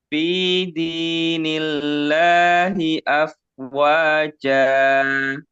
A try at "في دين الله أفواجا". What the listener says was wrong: kelebihan satu harokat. Kurangi dulu. Nah, jadi samakan aja dengan wa.